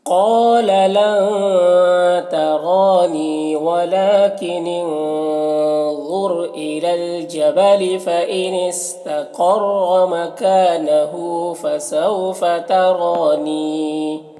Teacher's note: نی میں یا مدہ ہے تو 1 الف کے برابر کھینچ کر پڑھیں گے